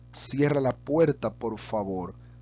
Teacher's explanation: Frases imperativas, como por ejemplo, cierra la puerta por favor, también se mantiene un poco lineal